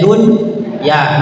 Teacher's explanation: dibacanya dun ya namanya izhar wajib bukannya idgam bigunah